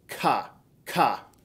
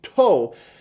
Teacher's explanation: So if you say ka, ka, like that, you'll notice that the middle of the tongue is creating the syllable there, ka, versus the front of the tongue, to, creating that to or that do sound.